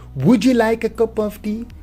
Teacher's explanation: An example of the latter is what is sometimes called coalescence or coalescent assimilation. A final t, d, and an initial y following often combine to form ch, j